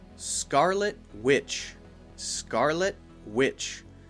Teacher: notice when I say Scarlet Witch I'm not saying the T sound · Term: stopped tea